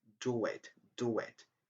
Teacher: In do it, do and it, we have the linking w.